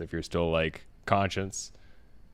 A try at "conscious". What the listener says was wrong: Conscious. Conscious. You're saying conscience.